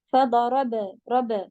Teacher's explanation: سکون قلقلہ کریں گی، یعنی آواز کو باؤنس